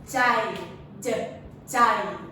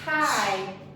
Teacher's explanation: you have to use your voice for the j